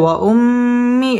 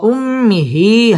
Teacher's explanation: وأبيه ওয়াও ঠোঁট গোল করিয়া পড়তে হবে। ওয়া উম্মি এটা হচ্ছে হরকতের বামে মিমের মধ্যে তাসদিদ আসছে, এটা হচ্ছে ওয়াজিব গুন্নাহ করে পড়তে হবে।